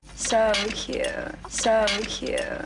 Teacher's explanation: Believe it or not, there's a scientific term for the way a Kardashian speaks, and it's vocal fry. It's a low, creaky vibration produced by a fluttering of the vocal cords.